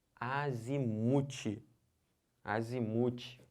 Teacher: É o mu que é a sílaba tônica.